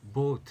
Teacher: 턱을 떨어뜨리면 안에 공간이 좀 더 많아지거든요. 그때 나는 소리가 boat 할 때 오입니다. 오, boat, 오.